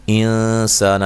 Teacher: انسانہ، یہاں نون ساکن کا اخفا ہے، اخفا مع الغنہ ہے۔ سا الف مدہ ہے، نون کو لمبا نہیں کرنا